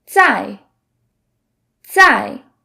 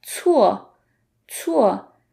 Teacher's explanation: So the difference between the C sound and the Z sound is in Z, we don't let out a puff of air, versus the C we do. So the Chinese C is exactly like the TS in the word cats.